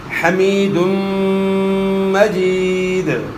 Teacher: دو پیش کی تنوین کے بعد حروف یرملون میں سے میم ہے، تو یہاں ادغام مع الغنہ ہوگا